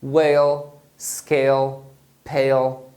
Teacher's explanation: em português a gente não costuma fazer o som do L final mas em inglês você deve fazer